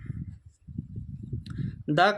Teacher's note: द का उच्चारण स्थान आपको दंत होता है